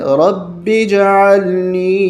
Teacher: یہ الف نہیں پڑھا جاتا، با کو جیم کے ساتھ ملایا جاتا ہے